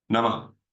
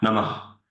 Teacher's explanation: You're not actually using, it's not, you're not saying a particular Ha syllable. It's not like Ha in Hindi. It's not like that. It's an exhalation which sounds like a Ha.